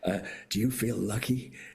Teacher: that kind of breathy California voice